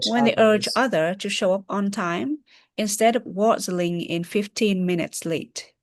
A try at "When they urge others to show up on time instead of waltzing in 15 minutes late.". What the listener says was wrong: Also, no break here. I know that there's a comma, but theoretically, you can navigate the entire chunk without breaking them apart. When they urge others to show up on time instead of waltzing in 15 minutes late.